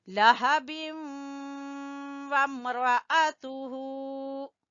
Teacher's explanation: इदगाम बिल गुन्ना होगा क्योंकि तनवीन के बाद वाव है